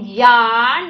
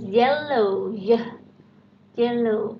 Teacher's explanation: yarn itu kita masukkan dalam palatal